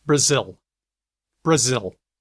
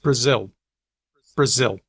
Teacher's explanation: and now here's with L vocalization Brazil Brazil it's very small word final L sounds a lot like w for a whole lot of people